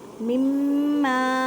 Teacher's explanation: میم مشدد ہے گنہ کریں اور الف مدہ کا قاعدہ ہو رہا ہے تو ایک الف کی مقدار میں کھینچ کر پڑھیں۔